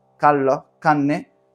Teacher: En mitad de palabra solamente se neutraliza si está antes de una N o de una L. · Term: estadio intermedio